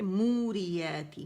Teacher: واو مدہ بن رہا ہے، کیوں واو جو اب نظر آ رہا ہے عربی مصحف میں، اس کا مطلب جب خالی ہوتا ہے تو یہ ساکن کی علامت ہوتی ہے، ٹھیک ہے؟ موریاتی، مو 2 کاؤنٹ کے لیے آواز گول ہوگی، را کے نیچے زیر ہے، آواز 1 کاؤنٹ کے لیے نیچے جائے گی، ٹھیک ہے؟ یاتی، اگین جیسے یاتی یہاں تھا، یاتی یہاں تھا، تو اس لیے یہ آسانی ہو گئی کہ ایک جیسا ہے تو پریکٹس میں اتنی پریشانی نہیں ہوگی، ٹھیک ہے؟